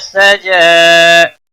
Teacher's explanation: سین سیٹی کی آواز تھوڑا ہونی چاہیے